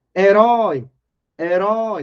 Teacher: a sílaba tônica é o último e termina com ditongo aberto · tá vendo a sílaba tônica é a última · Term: oxítona